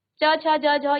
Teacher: च छ ज झ, ये आपके तालु को स्पर्श करेगा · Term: तालव्य